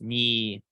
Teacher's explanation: Ni all the time. When you're reading out each digit separately, as when you're giving your phone number, it may be pronounced with a long vowel